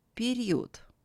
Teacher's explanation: In this word, Е is pronounced as E, and O is pronounced closer to U than to A. The voiced letter D becomes voiceless, as it is at the end of the word.